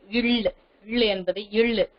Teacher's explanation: மேல்வாயை நாக்கின் ஓரங்கள் தடித்து தடவுவதால் பிறக்கிறது